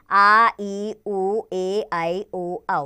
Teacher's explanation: ख, दीर्घ स्वर। इन स्वरों के उच्चारण में ह्रस्व स्वरों से दुगना समय लगता है